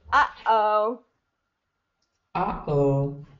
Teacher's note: I need a little bit more of like a break in your voice